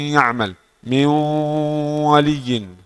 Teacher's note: campur suara dari hidung dengan suara ya atau dengan suara wau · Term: ghunah